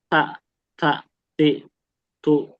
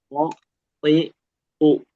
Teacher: Kalau th enggak dia enggak ada angin yang keluar sama sekali.